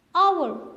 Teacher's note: हावर आप नहीं कहते, आप कहते हैं आवर, क्योंकि यहाँ पे हेज साइलेंट है